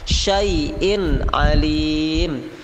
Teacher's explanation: tanwin bertemu Ain jadi harus dibaca jelas syai'in Alim tidak boleh Imung tapi harus idzhar jelas syai'in Alim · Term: izhar